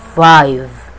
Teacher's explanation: Labiodental sound, F and V, consonant sounds which are produced by contacting the lower lip and upper teeth